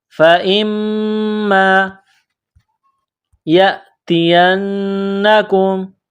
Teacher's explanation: مِنْهَا جَمِيعًا فَإِمَّا، حمزہ کو میم کے ساتھ پلس کرنا ہے، میم مشدد ہے تو آواز ناک میں چھپائیں گے